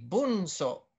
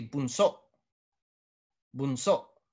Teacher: maragsa is always going to have that glottal stop in a vowel at the last.